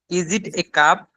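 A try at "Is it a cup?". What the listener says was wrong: এ হবে না, আ হবে। ইজ ইট আ কাপ?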